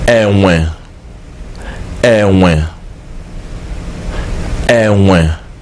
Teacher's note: So how you know this is that the sound goes low, the sound goes down. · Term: low tone